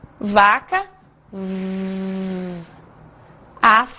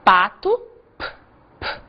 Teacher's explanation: nós fazemos exatamente o mesmo movimento e a única diferença é que o som sai com voz e sem voz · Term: sons com voz